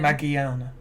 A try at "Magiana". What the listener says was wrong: You're emphasising the E. Because you used to call it Magiana.